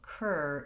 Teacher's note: the syllable stress in curtain is on the first syllable so cur is long and stressed and is short and unstressed so that's one way to mark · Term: stressed er